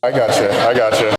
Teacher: The word you can be reduced to ya, especially if it's unstressed.